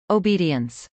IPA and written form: oʊbˈidiəns (obedience)